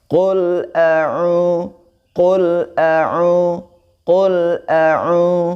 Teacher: Di situ ainnya dibaca 2 harokat karena di situ ada waw sukun, maka dihukumi menjadi mad tabi'i ya, atau disebut mad asli ya.